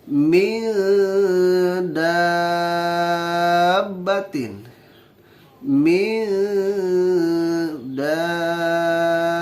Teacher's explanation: Ketika kita mengucapkan min, nah, lidah sudah persiapan untuk mengucapkan dal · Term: ikhfa akrob